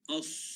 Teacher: Kemudian sad, wa as adalah sifat isti'la. As, kita punya lidah, kita punya bahagian pangkal lidah dia akan terangkat. As, ya. Baik, terus ayat 143, ayat yang terakhir pada pagi ini.